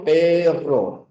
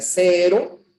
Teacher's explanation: simple choca una sola vez con el paladar y luego regresa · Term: vibrante simple